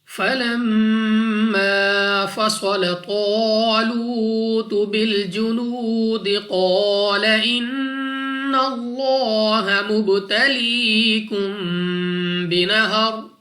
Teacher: میم مشدد غنہ کر کے پڑھیں گے، یعنی ناک میں لے جا کر پڑھنا ہے. اس کے بعد الف سے پہلے زبر الف مدہ ہے، 2 سیکنڈ تک لمبا کریں گے.